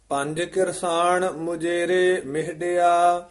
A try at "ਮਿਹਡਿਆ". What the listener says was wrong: ਇਹਨੂੰ ਮਿਹੱਡਿਆ ਨਹੀਂ ਕਹਿਣਾ, ਮਿਹਡਿਆ ਉਚਾਰਨ ਕਰਨਾ। ਇੱਥੇ ਕੰਨ ਭਾਰਾ ਉਚਾਰਨ ਕਰਨਾ ਹੈ।